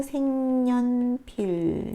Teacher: 니은의 영향을 받아서 비음인 이응으로 바뀌고 색연필 이렇게 발음됩니다. 네, 이것도 니은이 첨가된 거네요.